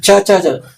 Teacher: ಅಗಲವಾದ ನಾಲಿಗೆಯಿಂದ ಚ ಚ ಚ ಬರುತ್ತೆ